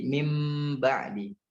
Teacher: Jadi nun sukunnya berubah menjadi mim. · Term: iqlab